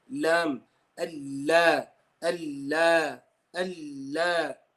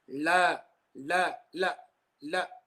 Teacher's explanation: the whole front area touching the gums. And that's where your letter lam is generated and born from.